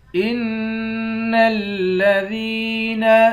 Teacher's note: حمزے کو نون مشدد کے ساتھ ملا کر نون پر غنہ کریں گے